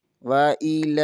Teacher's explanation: لام کے اوپر کھڑی زبر ہے، اسے ایک الف کے برابر کھینچ کر پڑھیں گے